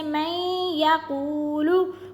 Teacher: قو کو کیوں کھینچ رہے ہیں کیونکہ یہ واو مدہ ہے